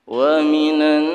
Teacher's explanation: Alif lamnya tidak terbaca, langsung masuk ke huruf nun. Ini alif lam syamsiyah.